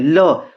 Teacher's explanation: जब ल बोलिए ल, तो जो हवा है ना वो जीभ के बिल्कुल पास से होकर गुजरती है, तब इसको हम पार्श्विक व्यंजन बोलते हैं।